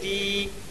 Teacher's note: یا مدہ کو ایک الف کے برابر کھینچ کر پڑھیں۔